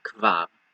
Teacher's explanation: So not really a vowel between the ka and the va sound